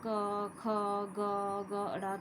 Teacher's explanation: जैसे यहाँ पर सबसे पहले का वाली जो लाइन होती है इसको हम कवर्ग बोलते हैं। कवर्ग जो होते हैं ये सारे कंठ से बोले जाते हैं।